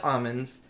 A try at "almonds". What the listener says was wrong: He talks as if the L is silent, which I don't correct almonds.